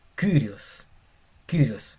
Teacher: Es como una I pero con una boca de U.